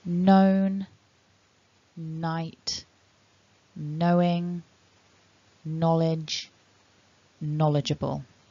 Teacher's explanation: in this collection of words you don't want to be pronouncing that that letter K that looks as if it's there but actually it's silent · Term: silent K